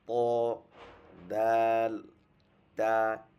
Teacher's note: জিহ্বার আগা সামনের উপরে দুই দাঁতের গোড়ার সাথে লাগিয়ে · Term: 11 নম্বর মাখরাজ